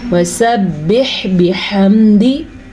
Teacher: حا پہ وقف ہے اور حا پہ ساکن ہے تو یہاں پہ ہم رکیں گے بھی اور حا کو کلیئر بھی کریں گے